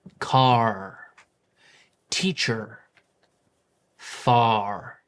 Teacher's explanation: R is often pronounced clearly wherever it appears, whether at the beginning or the middle or the end of a word. And unlike other English accents where the R may be dropped or softened, in American Standard, the R remains strong. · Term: The American R, American R